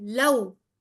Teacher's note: واو ساکن سے پہلے والے حرف پہ زبر ہے تو یہ واو لین ہے، تو اس کو بغیر لمبا کیے ملا کر جلدی سے ادا کریں گے